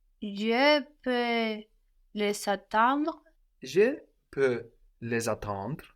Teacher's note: the reappearing of the S, which sounds like a Z here between vowels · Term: liaison